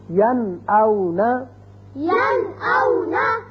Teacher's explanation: نون ساکن کے بعد حمزہ آ گیا، لہذا نون کو ظاہر کر کے پڑھیں گے